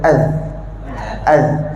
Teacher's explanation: Masa kita sebut az, lidah kena keluar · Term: huruf zal